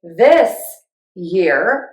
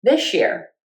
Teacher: You can say this year with a slight pause and say that S and that ya sound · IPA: /ðɪs jɪr/ or /ðɪʃɪr/